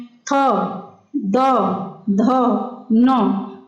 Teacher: थ, द, ध, न का उच्चारण करते समय दंत यानी दांतों का प्रयोग किया जाता है।